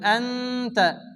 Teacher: নুন সাকিনের পরে ইকফা হরফ তার সাথে একলিফ গুণ হবে